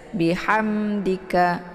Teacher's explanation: Di sini ada mim sukun ketemu dengan huruf dal ya. Mim sukun bertemu dengan dal dinamakan kepada idhar syafawi. Jadi cara bacanya mimnya dibaca jelas.